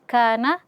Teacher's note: kana kaf fathah setelahnya alif. Nah di sini mad asli dibaca dua harakat